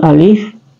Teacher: Huruf alif itu adalah huruf aqsal halqi atau huruf yang keluar di rongga tenggorokan kita. Jadi ketika kita sebut alif, maka dia keluar di rongga tenggorokan.